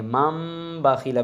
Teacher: نون تنوین کے بعد با آ جائے تو وہ دونوں میم بن جاتی ہیں. اب یہ من نہیں پڑھیں گے، با کی وجہ سے یہ چھوٹی میم پڑھی جائے گی، مم باخیلہ بن جائے گا۔